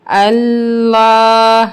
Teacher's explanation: ہم لام کو پر پڑھیں گے یعنی کہ موٹا پڑھیں گے کیونکہ اس سے پہلے زبر ہے